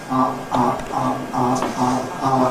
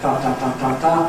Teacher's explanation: So it’s a kind of plosive made at the glottis, instead of with the tongue tip. Instead of [ta], you get [ʔɑ]. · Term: glottal stop